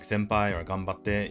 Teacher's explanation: if you follow it with a P or a B, like senpai or ganbatte, you'll see that I close my mouth